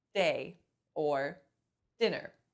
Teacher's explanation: we've brought our tongue up behind our teeth to those bumps behind your teeth and that's called your alveolar Ridge so you bring your tongue up and you rest it there